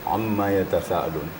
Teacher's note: mimnya eh qasar atau pendek biasanya mim bertasdid tu adalah panjang seperti mimma Amma tapi di sini pendek kita harus juga hati-hati